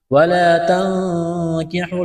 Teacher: نون ساکن کے بعد کاف ہے، حروف اخفا ہے، غنہ کریں گے، آواز ناک میں چھپائیں گے